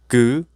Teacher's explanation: The five basic consonants were created after the shape or movement of the vocal organs. 그, the root of the tongue has blocked the throat